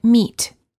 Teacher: to correctly produce each of the vowels e as in meat the lips are slightly smiling tense and not rounded